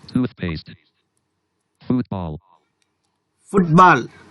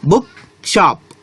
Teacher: ఈ కాంపౌండ్ వర్డ్స్లో మనం first syllable పైన స్ట్రెస్ మార్క్ చేయవలసి ఉంటుంది